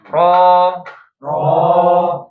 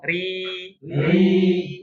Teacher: Fathah dan domah kita buat tebal. Kasr dibuat tipis.